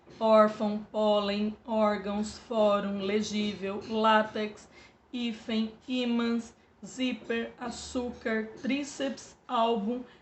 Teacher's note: Todas essas palavras têm o som mais forte na penúltima sílaba, então são paroxítonas.